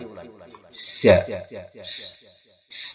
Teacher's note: Kalau za, dia bersiul, tapi tidak berhembus napasnya. Ya, karena dia bukan hamas.